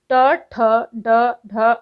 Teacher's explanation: मूर्धन्य कठोर तालू के अगले भाग से